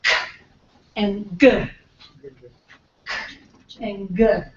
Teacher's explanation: So the back of the tongue is raised. Okay? So that touches the soft palate. All right? So those are what we call velar.